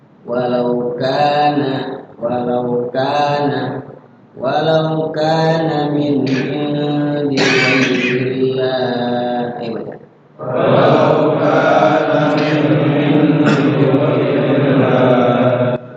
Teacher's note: Kemudian walau kana min indi ghairillah, kana matobi, yaitu durasinya panjangnya 2 ketukan atau sekedar diayun saja. · Nunnya dibaca jelas. Karena dia bertemu dengan salah satu huruf izhar, ain.